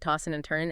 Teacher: the D and N might blend · you often drop the G sound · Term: G dropping